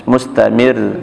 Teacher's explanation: Kalau ra berdomah, ya walaupun dia disukun, tetap dibaca tebal. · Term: ra tebal